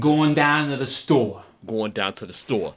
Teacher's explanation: the New York accent tends to be kind of monotone